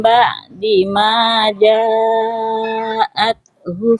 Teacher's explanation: ta sukun jangan sampai mantul